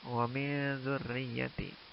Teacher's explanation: Kalimat wa min dzurriyyati nun sukun bertemu zal, maka ini dihukumi juga dengan ikhfa. Cara bacanya samar-samar.